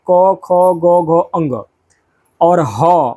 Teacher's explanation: इनका उच्चारण जो है वह कंठ यानी कि गले से होता है।